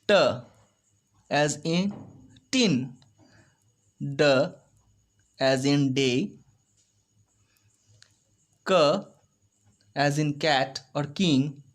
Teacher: Plosive, complete closure, sudden release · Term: plosives